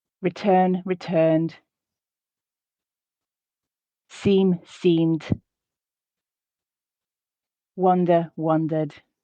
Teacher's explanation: you do get some devoicing of that D as I switch my vocal cords off because the word is followed by silence. But it's important, as we discussed last week, that at the beginning of that D sound, at the end of those words, that it is voiced.